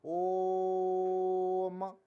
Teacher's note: इसमें प्लुत स्वर में जो हम प्रयोग करते हैं उसमें तीन मात्रा का समय लगता है। जिस तरीके से देखिए, यदि हम सादा इसको ना करें तो हम पढ़ेंगे ओम, लेकिन इसको हम यदि पढ़ेंगे, प्लुत स्वर का प्रयोग किया गया है, तो इसको हम और ज्यादा समय लेकर पढ़ेंगे ओम।